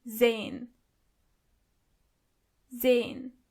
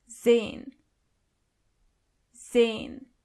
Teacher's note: the letter S is not pronounced as S but more like Z